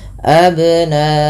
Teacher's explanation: bagaimana cara memantulkan qalqalahnya adalah dibunyikan ya, tapi dia tidak putus dan tidak tertambah hamzah. Maka abna sesuai dengan hurufnya saja, dibalikkan kepada hurufnya.